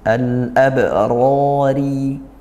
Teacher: ba sukun dibaca qalqalah sughro. Kemudian roya ditafhimkan dan juga dia madabi'i.